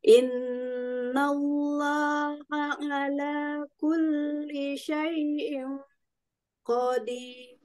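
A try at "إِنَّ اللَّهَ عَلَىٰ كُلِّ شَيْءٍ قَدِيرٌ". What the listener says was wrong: Syai'in qadirnya kita tebalkan lagi ya Umi ya, karena kok itu tidak irfa tapi dibaca tafkhim tebal ya.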